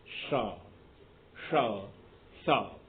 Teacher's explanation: हवा संघर्ष करके निकलती है, इसलिए अधिक गर्म हो जाती है। इसके कारण से इनका नाम ऊष्म वर्ण है।